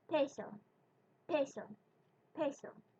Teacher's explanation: Do you feel a little puff of air when you pronounce the P?